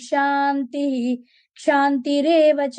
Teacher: The reason why Shanti, we are saying as Shantihi, although it comes in the middle of a line, is because it is followed by the Akshara Ksha. So wherever this happens, we will pronounce the Visarga explicitly, unlike